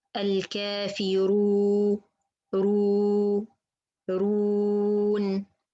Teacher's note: And be sure your tongue is not affect the way of the mad when it's go out. Plus, for the mad letters, our circle of the lips, it's a little bit opener than the dhamma.